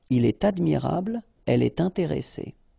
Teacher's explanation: So like here, for instance, il est admirable, il est admirable, okay, elle est intéressée, all right, so in all these cases, you should make the liaison, and in that case, it's with T